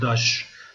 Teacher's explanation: Daş sözcüğü yine T düşüyor